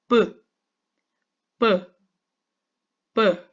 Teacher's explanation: 내 입술을 한번 오므렸다가 딱 열면서 나는 소리죠 이 공기가 입술에서 한번 딱 다쳤다 가이 입술을 딱 열면서 이거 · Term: 순음